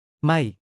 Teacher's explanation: falling tone starts high, drops sharply